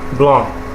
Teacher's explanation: There may just be a single vowel causing the nasal quality of the word, such as the following: blanc, okay, pronounced as blanc with a slight hint of the pronounced K at the end.